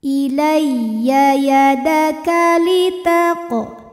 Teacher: Ya tasydid dibaca dengan menggunakan nabar. Artinya kita naikkan intonasi suara kita.